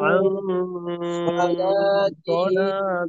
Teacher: আর এখানে আউ গুন্না চলাকালীন সময়ে যেহেতু পরবর্তীতে সদ, তো সদের মাখরাজে অবস্থান করব সদের সিফত সহকারে, অর্থাৎ ইস্তিআলা ইতবাক, এই সিফতের আহ, প্রভাবও এইখানে থাকবে, যে কারণে গুন্নাটা মোটা হবে।